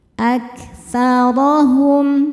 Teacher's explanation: Ra dibaca tafkhim karena harokatnya fathah maka bacanya tebal